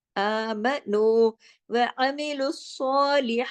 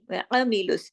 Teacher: आइन जो है आइन की तरह पढ़ा जाएगा, हमजा की तरह नहीं